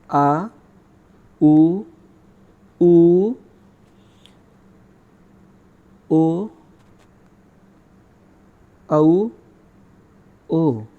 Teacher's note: जब हम इनका उच्चारण करेंगे तो हमारी जीभ का पिछला भाग सक्रिय रहेगा। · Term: पश्च स्वर